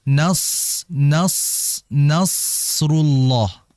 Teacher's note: Makhrajnya itu ujung lidah ditempelkan ke gigi seri bawah. Ditempel situ biar ngalir. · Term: huruf shad